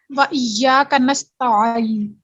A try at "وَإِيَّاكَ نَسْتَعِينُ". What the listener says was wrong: اب آئین پھر ہیوی ہو رہا ہے نا، لائٹ رکھنا ہے اس کو. کوشش نہیں کرنی.